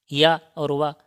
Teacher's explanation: इनका उच्चारण उच्चारण जो है लगभग स्वर जैसा होता है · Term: अर्ध स्वर